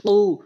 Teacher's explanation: কফটা হচ্ছে জিহ্বার গোড়া থেকে উপরের তালুর সঙ্গে